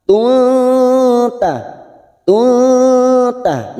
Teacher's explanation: Sekarang karena kita wasol atau terus, maka huruf ta yang berharokat dumatain ini bertemu ta kita samarkan bunyi ta. Tuta, tuta, namanya ikhfa hakiki, kita samarkan 3 harokat.